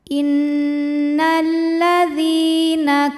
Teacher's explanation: adalah Mad thiiri sebab ada ya sukun yang sebelumnya berharakat kasrah maka huruf Dal panjang dua harakat · sebelumnya berharakat kasrah maka huruf Dal panjang dua harakat innalladina kafaru huruf ro dibunyikan secara tafkhim sebab ro berharakatah maka dibacanya tebal ka ru hukumnya adalah Mad · Huruf ra dibunyikan secara tafkhim sebab ra berharokat dhammah, maka dibacanya tebal.